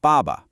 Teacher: It's sharp, it's a decisive fall in pitch, almost like a command, ba. Then the second syllable is a neutral tone, so it's light and unstressed.